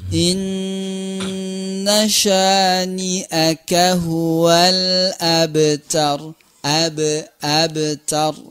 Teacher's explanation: Qalqalah ya. Jadi qalqalahnya di sini adalah dijalankan, nggak boleh dibaca abtar berhenti gitu, jalan saja.